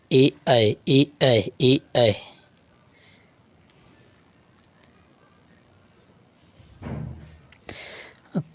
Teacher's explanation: कंठ ताल ध्वनि होती हैं ए ऐ